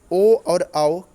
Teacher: ओ और औ कंठ प्लस ओष्ठ से बोले जाते हैं